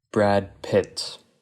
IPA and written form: bɹæd pɪt (Brad Pitt)